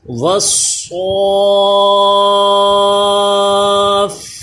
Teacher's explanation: صاد کو پر بھی کریں، حروف مستعلیہ ہے